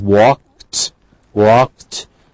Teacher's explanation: final sound is k, so the past tense is walked, walked, so we mark t